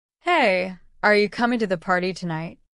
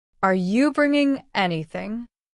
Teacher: Notice how the tone rises for questions and falls for confirmations.